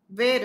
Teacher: વેર સાંકડો સંવૃત્ત ઉચ્ચાર જ્યારે હું એનો કરું છું ત્યારે એનો અર્થ થાય વેરવું. પણ વેર, વેર ઝેર, દુશ્મનાવટ જ્યારે હોય ત્યારે એનો જે એ છે એ વિવૃત્ત છે.